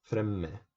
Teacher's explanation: you pronounce two M's, fremme. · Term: double consonants